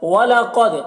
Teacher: وَلَا مُبَدِّلَ لِكَلِمَاتِ اللَّهِ۔ وَلَقَدْ، قاف کو پر پڑھیں گے، دال میں قلقلہ کریں گے۔